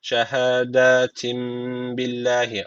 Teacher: Allah lafzı ince okunacak. Çünkü öncesindeki harfin harekesi altta. Yani Allah lafzının alttan geliş yapılıyor.